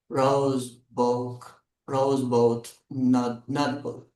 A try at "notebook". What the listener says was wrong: I'm hearing nut book. I want notebook. We want O. Everyone try O. O. Notebook.